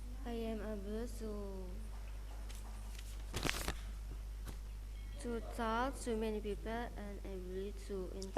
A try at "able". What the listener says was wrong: Able, bukan ably.